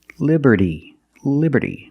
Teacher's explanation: Statue of Liberty and we see that t and Liberty is between vowels so it's pronounced like a fast D